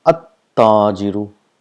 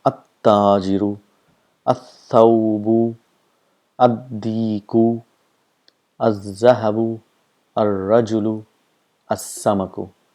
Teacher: All these letters are pronounced by bringing the tip of the tongue just in front or just near the teeth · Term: huruf shams